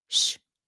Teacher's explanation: the s in proper Vietnamese is pronounced like an sh